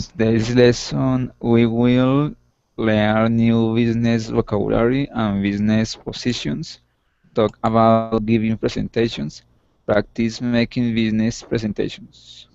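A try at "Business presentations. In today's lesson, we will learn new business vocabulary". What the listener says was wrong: Nice. Really good pronunciation. That sounded great.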